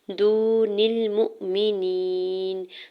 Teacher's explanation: واو ساکن سے پہلے دال کے اوپر پیش ہے، واو مدہ اور دو حرکت کھینچ کے ادا کریں گے